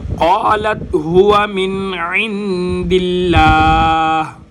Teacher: چونکہ یہاں پر لام سے پہلے زیر آ رہی ہے لہٰذا لفظ اللہ کا جو لام ہے یہ باریک ہوگا